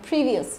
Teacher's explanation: previous trọng âm đầu tiên nhé